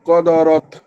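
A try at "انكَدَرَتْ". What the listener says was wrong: না ক না, এটা কা, কাদারত। কফ হলে ক বলতাম।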